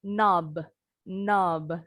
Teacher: kalau kata knob dibaca sendiri nih, nggak nyambung dengan kata yang lain, B-nya itu memantul kayak kol-kolah.